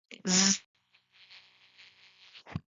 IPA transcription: zzzz